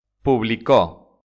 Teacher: la sílaba fuerte es la última son las palabras agudas